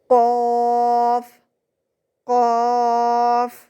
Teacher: یہ آپ کی زبان کی جڑ جب آپ کے اوپر تالو کے ساتھ لگتی ہے تب ادا ہوتا ہے. زبان کا بالکل آخری حصہ. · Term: نقطوں والا قاف